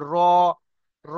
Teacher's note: কারণ রর উপর জাবার এসছে, র পুর হবে, মুখ গোল হবে